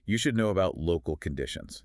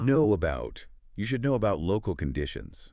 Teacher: When we say the words know and about quickly together, our lips have to physically push forward, which naturally creates a W sound to bridge the gap.